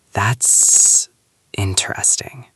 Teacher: Did you hear that long pause and the way the voice went down at the end? That is the polite red light. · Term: falling intonation